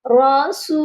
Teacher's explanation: اب ادھر واو ساکن سے پہلے پیش ہے تو یہاں پر واو مدہ ہے، اسی لیے ہم نے اس کو ایک الف کے برابر لمبا کر کے پڑھا ہے